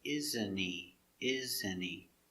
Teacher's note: T is silent with NT. H is silent because it's not stressed.